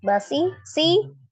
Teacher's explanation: ya sukun sebelumnya kasrah di huruf ee shad si dibaca mad dua harakat kemudian ro fathah dibaca tebal ada huruf ta marbutah di akhir